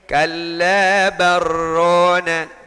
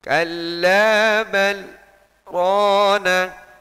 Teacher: Karena dia berhenti, maka hukum idghamnya hangus. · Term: sakta